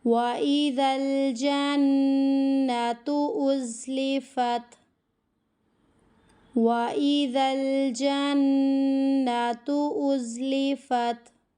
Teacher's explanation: نون کو کھینچنے کی غلطی اور تا کو کھینچنے کی غلطی، دونوں کو بالکل بھی نہیں کھینچنا، غنّے کو ہمیں کمپلیٹ کرنا ہے